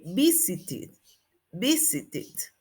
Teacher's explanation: visit termina en T y la pronunciación ED va a ir como it